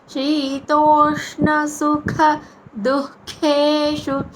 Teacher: ష మూర్ధన్య ష అంటే నాలుకని పైన అంగటికి తగిలించి మెత్తడి భాగాన్ని తగిలించి పలకాలి. అప్పుడు ష పలుకుతాం.